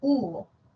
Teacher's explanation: La vocal U también es alta, pero posterior.